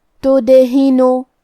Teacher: کلمت تدہنو یہاں دال پہ جزم ہے تو ہمیں دال کو قلقلہ سے پڑھنا ہے اور قلقلہ کا معنی ہے حرف ساکن کو ہلانا، تو ہم دال کو ہلاتے ہوئے یہ کلمہ کو پڑھیں گے